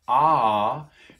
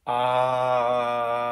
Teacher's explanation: taking a back vowel and moving it forward so we could take the ah and move it forward and